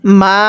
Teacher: ওয়াও জবর ওয়া মিম আলিফ জবর মা। এই মিমের মধ্যে আমরা তিন আলিফ টান দিব। কারণ মদের হরফের উপর এরকম চিকন চিহ্ন।